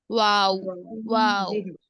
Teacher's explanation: दोनों होठों के किनारे मिलने से वाऊ जो है दोनों होठों के किनारे मिलने से वाऊ ठीक है